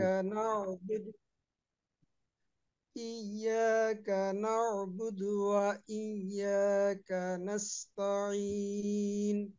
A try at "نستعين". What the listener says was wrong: নাস্তাইন মতো মনে হয়েছে, এখানে তা জবর তা আছে।